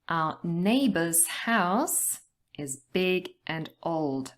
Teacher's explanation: we are going to stress the nouns neighbors house and also the adjectives big and old